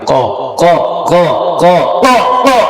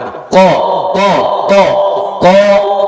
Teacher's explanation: জিহ্বার গোড়া তার বরাবর উপরে তালুতে লাগায় পরে একটু মোটা করে পড়ে ফেলবেন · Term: কফের মাখরাজ